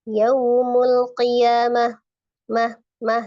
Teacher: karena huruf H itu memiliki sifat al-hams, ada aliran nafas ya yang berhembus ketika pengucapan huruf H. Kemudian dia juga termasuk huruf yang rawa, suaranya juga harus dialirkan.